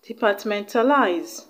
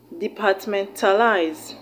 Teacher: The stress is on the second syllable from the end of the word, which is on the TA.